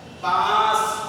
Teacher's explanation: الف کو کھینچ کے پڑھا جا رہا ہے، اس پر نون غنہ